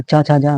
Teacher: चा छा जा वाली जो लाइन होती है ये तालव्य व्यंजन होते हैं